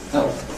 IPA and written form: heɫp (help)